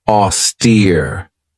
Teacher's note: this has two syllables and the stress is on that second syllable with that long e sound